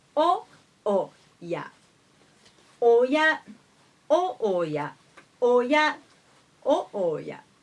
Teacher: The first o high, the second o low.